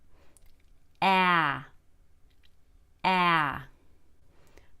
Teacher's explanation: short a has a much lower tongue the tongue is all the way at the bottom of the mouth but the tip of the tongue points upward